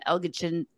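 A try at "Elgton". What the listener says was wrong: Elton. It's just Elton. It's a silent G.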